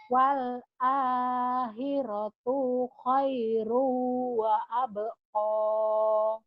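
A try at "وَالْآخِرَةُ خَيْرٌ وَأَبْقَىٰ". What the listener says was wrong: Kenapa tuhnya panjang ya? Wal akhiratu. Pendek ya. Wal akhiratu khairu wa abqa.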